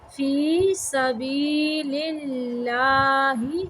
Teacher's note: یہاں پہ اللہ کا نام باریک پڑھیں گے